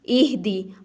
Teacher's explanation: ہا کو سینے سے نکالنا ہے